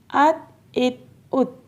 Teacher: تا حروف قلقلہ میں سے نہیں ہے، اس لیے ہم نے یہاں پہ آواز کو روک کے پڑھنا ہے، آواز ہلانی نہیں ہے۔